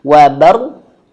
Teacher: Maka di sini cara bacanya adalah sempurnakan dulu huruf ro-nya. Ro yang sukun di sini dia posisinya atau kondisinya dia tebal.